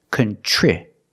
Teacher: TR makes the CH sound like chicken plus the r together